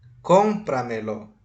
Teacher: A sílaba tônica é com, ou seja, ela é anterior à antepenúltima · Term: sobresdrújula